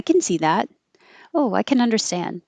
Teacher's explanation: when it's the positive that looks like can, it will sound like kin. Just kin, like a K and an N. Forget about any vowel in between.